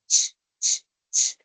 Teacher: Cuando tú haces ese sonido, ch, ch, ch, entonces, eso es lo que ese es el movimiento que está realizando tu lengua. Una obstrucción total en la zona del paladar y luego se separa y deja un pequeño espacio para que el aire friccione. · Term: modo africado